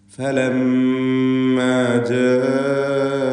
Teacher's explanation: ജാഅത് ഈ പദത്തിലുള്ള അലിഫിൻ്റെ ദീർഘം മദ് മുത്തസിൽ വാജിബ് എന്നതാണ്. നിർബന്ധമായും അലിഫിന് 4-5 ഹറക്കത്തിൻ്റെ അളവിൽ ദീർഘിപ്പിക്കണം. അലിഫും ശേഷം ഹംസയും ഒറ്റ പദത്തിലായി വന്നതാണ് ഇതിനുള്ള കാരണം.